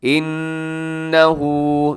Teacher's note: नून मुशद्दद गुन्ना है